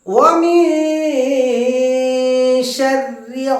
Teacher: মিন বলতে বলতে শিনের মাখরাজের দিকে আমরা ধাবিত করব। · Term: ইকফা